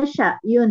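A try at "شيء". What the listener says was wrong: Jangan ada a-nya, jangan ada a-nya, Bu. Jangan ada a-nya.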